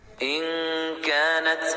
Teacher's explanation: نون ساکن کی آواز کو ناک میں چھپا کر غنہ کے ساتھ پڑھیں گے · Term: اخفا